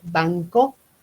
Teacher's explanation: Que la K me velariza la N. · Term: velarizada